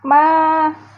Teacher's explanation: Ma, ada alif sebelumnya fathah, maka hukum bacaannya adalah mad tabi'i. Panjang bacaannya 2 harokat atau 1 alif